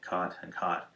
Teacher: those words used to be pronounced differently, but now for I believe more than half of all North Americans, we say them the same way